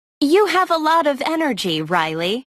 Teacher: There is usually falling intonation and a pause before the name.